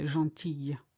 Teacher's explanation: you don't hear the l it's a u sound because we've got the i double l